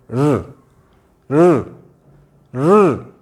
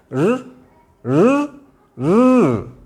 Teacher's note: इसको आप र को कितना ही ह्रस्व कर लें, कितना ही प्लुत कर लें, ह्रस्व बोलें, दीर्घ बोलें, या फिर कितना ही प्लुत रूप में बोलें, कितनी ही देर तक बोलें, र र र, मतलब हमारा प्राणवायु मूर्धा को स्पर्श करता हुआ बाहर आता है। और ध्यान रखिए, इसमें झंझनाहट टाइप का, एक झंझनाहट जैसा एक ध्वनि निकलती है।